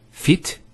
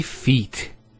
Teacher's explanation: There's an elongation of the E sound.